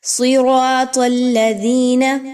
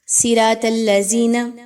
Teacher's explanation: صاد کو موٹا، را کو الف کی وجہ سے اور زبر کی وجہ سے پر موٹا یعنی کہ، اور طا کو بھی موٹا، لیکن عام طور پہ